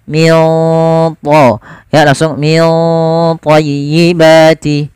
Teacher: ikhfanya langsung ke huruf ta, ditebalkan, maka ikhfanya agak tebal